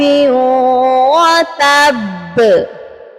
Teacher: جب ہم یہاں پر قلقلہ کریں گے تو با کی زبر کو ڈراپ کریں گے، با کو ساکن کریں گے اور با پر ہم قلقلہ کریں گے تو یہاں شدت سے قلقلہ ہوگا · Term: مشدد والا قلقلہ